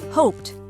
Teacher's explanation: The Ed ending is pronounced as T when the verb ends in a voiceless sound